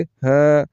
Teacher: ایک الف کے برابر کھینچ کر پڑھیں گے تا ما تا ہا کے اوپر کھڑا زبر ہے ایک الف کے برابر کھینچ کر پڑھیں گے